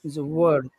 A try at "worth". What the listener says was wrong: Yeah, make it a little bit longer. Worth. Worth.